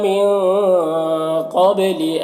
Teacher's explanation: قاف حروف اخفا میں سے ہے تو نون میں اخفا ہوگا، نون کی آواز کو ناک میں چھپا کر پڑھیں گے۔ قبلی قاف حروف مستعلیہ میں سے ہے، حروف مستعلیہ میں سے ہے تو پر پڑھیں گے۔